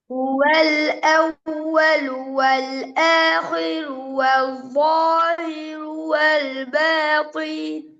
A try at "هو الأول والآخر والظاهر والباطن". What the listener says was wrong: இந்த ரெண்டு ராவும் பேல பாத்தீன்ல இன் சவுண்ட் வரல, ரெக்கார்டை கேட்கும். இந்த ரெண்டு ராவும் பேல தடிப்பம் வரல. ஆஹிரு ரூ அல்ல, நாக்கு பின்னுக்கு போகணும். ஆஹிரு லாஹிரு ரூ.